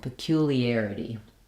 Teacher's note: peculiarity, stress on the third to last syllable